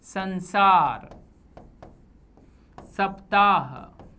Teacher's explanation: जीभ ऊपर के दांतों को पीछे से स्पर्श करेगी, इसे वर्तस्य कहा जाता है